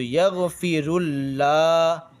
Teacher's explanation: را لام پیش رل، یغ فی رل، لام کھڑا زبر لا، کھڑا زبر کو تھوڑا سا کھینچنا پڑتا ہے ایک الف کے برابر